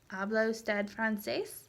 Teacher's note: and your voice rises at the end so that way you know it's a question instead of a statement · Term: rising intonation